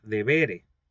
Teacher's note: En la terminación de la segunda conjugación, la primera e es larga.